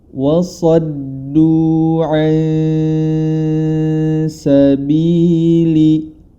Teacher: Nun sukun bertemu dengan huruf sin, maka cara membacanya adalah disamarkan. Samar dalam artian antara idgham dan izhar disertai dengan gunnah, atau hukum tersebut kita kenal sebagai ikhfa.